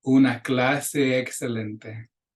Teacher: We're going to link those two E's.